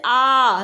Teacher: जिन स्वरों के उच्चारण में जीभ का पश्च भाग काम करता है उसे हम कहते हैं पश्च स्वर। मतलब अगर हम आ को बोलते हैं तो हमारा जो जीभ जब उच्चारित होती है तो वो हमारे जीभ का पिछला भाग काम करता है।